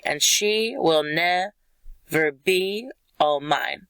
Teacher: unstressed stressed unstressed stressed unstressed stressed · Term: iambic